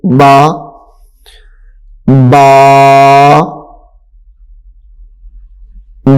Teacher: یہ ہونٹوں سے ادا ہونے والے حروف میں سے ہے